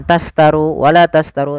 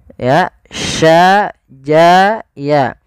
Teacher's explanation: Kita sesuaikan makhraj daripada huruf shin. Makhrajnya adalah tengah lidah kita. Ja, sya, ya itu tengah lidah.